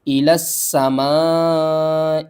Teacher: لام کو ہم نے سین سے ملانا ہے، تشدید کی وجہ سے